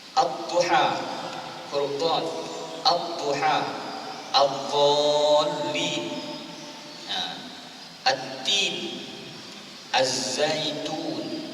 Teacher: Maknanya tidak ada bunyi lam, tidak kedengaran bunyi lam. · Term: Idgham